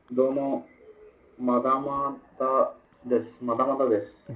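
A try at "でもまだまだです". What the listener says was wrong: ಡೆಮೋ ಅಲ್ಲ ಡೆಮೋ ದೋಮೋ ಅಲ್ಲ ಡೆಮೋ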